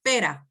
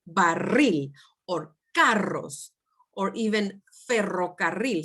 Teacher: when there are two vowels together and there's an R in between them, the R will be soft, like in the word pera, pear, pera.